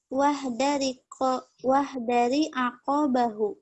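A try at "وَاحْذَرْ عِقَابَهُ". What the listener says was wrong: Wahdar sukun. Wahdar iqabahu.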